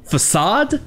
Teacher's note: Nous avons la deuxième syllabe accentuée qui a le son du A en français, A, façade, alors que la première syllabe a le son non accentué du A en anglais qui est E, façade.